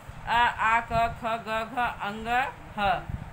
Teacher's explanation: यानी कि इनके उच्चारण में हवा जो है कंठ को स्पर्श करते हुए निकलती है। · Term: कंठ वर्ण